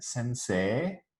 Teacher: whenever we write ei, as in sensei, we don't actually say ei anymore. It's become a long e sound.